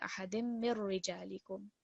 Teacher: So no nun sakin is going to be heard when we join these together. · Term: merging without a nasal sound